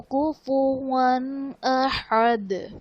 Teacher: کفواً احد، واو پر دو زبر کی تنوین، اس کے بعد حروف حلقی میں سے حمزہ ہے تو یہاں پر اظہار کا قاعدہ ہوگا، یعنی غنہ نہیں کریں گے اور دال وقف کی صورت میں ساکن ہو جائے گا تو یہاں پر ہم قلقلہ خوب ظاہر کریں گے۔